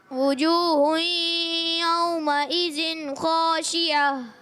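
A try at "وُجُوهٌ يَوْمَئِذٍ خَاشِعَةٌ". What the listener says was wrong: یومئذن، پیارے بچوں ذال کی ادائیگی ہم نے کلیئر کریں، وجوہ یومئذن خاشعہ، پڑھیں دوبارہ۔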